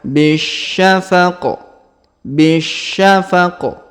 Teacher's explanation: huruf q di ujung ini kita sukunkan sehingga kita baca pantul atau Qalqalah